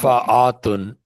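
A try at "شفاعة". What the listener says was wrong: No, not atun. It will be shafa'atun. There is no alif after an. Oh, shafa'at. Ati. shafa'atun. Feminine plural.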